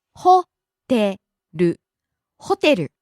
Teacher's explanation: Starts high, falls on the second syllable te, stays low.